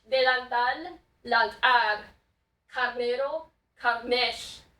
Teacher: R's are moving to L's, and L's are moving to R's. Those are similar sounds. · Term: liquids